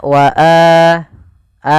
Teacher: alif, wau, atau ya, maka itu kita namakan dengan mad badal. Panjangnya adalah dua harakat sebagaimana mad thabi'i.